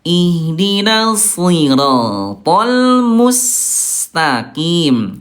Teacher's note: Ihdinas diangkat pangkal lidahnya walaupun kasrah. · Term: tebal